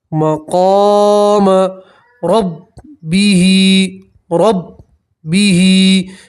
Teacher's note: مقام، مقام ربہ، ربہ کھڑی زیر میں بھی آپ ایک الف کے برابر کھینچیں گے۔ را کے اوپر زبر ہے، را کو موٹا پڑھیں گے، پور پڑھیں گے۔